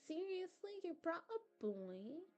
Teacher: You know how I don't know how to explain it really, but she likes she exaggerates, like when she's speaking. It sounds like she exaggerates the first syllable of every word.